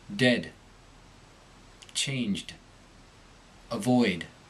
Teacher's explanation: this sound is made by the tongue tip arriving behind the upper teeth there should be an accompanying tone in the throat as the syllable descends in pitch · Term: the final d